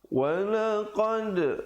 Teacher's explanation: Walaqad, ada pantulan di situ. Khalkhalah sughra.